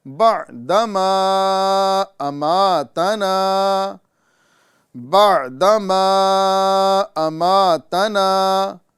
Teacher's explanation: یہاں پہ دال پر زبر ہے، یعنی بغیر کھینچے، بغیر جھٹکا دیے پڑھیں گے